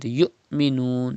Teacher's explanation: You can see hamza sakin in this word, and hamza sakin is always pronounced with sudden pause